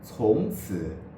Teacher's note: it's specifically the tongue tip that is used, not the entire front part of the tongue pressed against the upper teeth. Since the z, c, s are the most phonic consonants in Mandarin Chinese, we compensate by bringing the sound slightly backward.